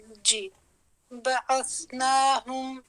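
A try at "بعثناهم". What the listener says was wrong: ہم نہیں ہے، ہو ہم.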